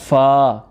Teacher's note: فا ثنایا اولیا کے کنارے اور نچلے ہونٹ کا تر حصہ